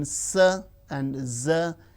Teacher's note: alveolar, the teeth ridge and the blade of the tongue